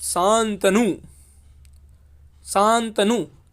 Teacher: नासिका से अनुस्वार का उच्चारण होता है